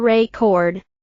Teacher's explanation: For example, the word record can be a noun or a verb, depending on where the stress is placed. If you stress the first syllable record, it's a noun.